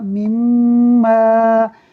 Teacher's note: یہاں میم مشدد ہے اور میم مشدد ہو تو اس کے اندر غنہ ہوتا ہے، یعنی آواز کو ناک میں لے جا کر پڑھتے ہیں ایک الف کے برابر